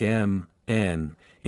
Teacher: sounds like m, n, ing are produced with the airflow through the nose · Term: Nasals